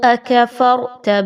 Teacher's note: را کے اوپر جزم کی علامت ہے، اس سے پہلے فا کے اوپر کوئی حرکت آ گئی، اس وجہ سے اس را کو پر پڑھیے